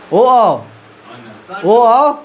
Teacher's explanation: ओ कंठ भी आ रहा है और ओठ भी आ रहा है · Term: कंठ ओष्ठ